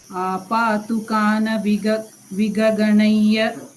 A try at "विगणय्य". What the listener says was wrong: No, you're saying Vigaganaya. It's Viganaya.